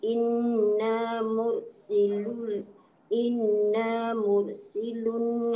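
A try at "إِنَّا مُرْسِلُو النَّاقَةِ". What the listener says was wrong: Dia jadi nipis tu. Dia bukan mur. Mur.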